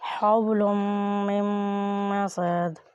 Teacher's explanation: دونوں میم کے اوپر شد ہے اس لیے ان دونوں کو ہم گنہ کریں گے